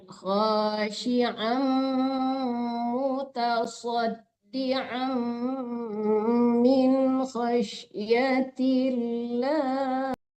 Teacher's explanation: Ditekan ke mim ya Bu, didengungkan ya.